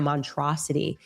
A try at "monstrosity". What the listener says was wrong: Monstrosity. There's definitely an S in there. This is a monstrosity.